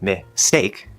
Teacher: They're just special, really soft versions. This is one of the strange things about the S sound, is it tends to soften the stop sounds after it.